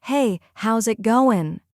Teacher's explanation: Notice how the final G in going disappears.